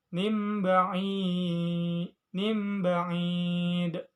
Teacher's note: Terdapat hukum bacaan iklab sebab nun sukun bertemu ba. Cara bacanya nun sukun berubah menjadi mim.